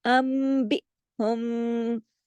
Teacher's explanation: इसको कहते हैं इख्फा शफवी, यहाँ पे भी गुन्ना कामिला ही होता है सेकंड लेवल का।